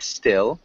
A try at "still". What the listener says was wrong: Close. It's got a short I, so still.